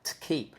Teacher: I don't need to say t like that. I can almost just do a t sound without any vowel